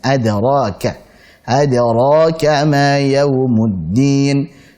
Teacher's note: Ada tipis, ra tebal ka. Jangan lupa hamznya.